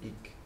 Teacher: because there was no prefix, the palatal glide was lost and it became ik.